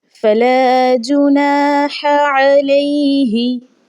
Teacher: پہلا جو ہا ہے وہ ہا حلقے درمیانی حصہ سے ادا ہوگا، جبکہ دوسری جو ہا ہے یہ حلقے آخر والے حصے سے ادا ہوگی